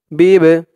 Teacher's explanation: এই বাটা কল কলার হরফ ধাক্কা দিয়ে পড়তে হবে